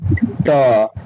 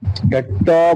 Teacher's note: बोलिए ट ट बोलिएगा ना तो आपका जीव जो है ना जीव का जो अगला अगला वाला भाग है वह हल्का ना मुड़ जाता है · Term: मूर्धा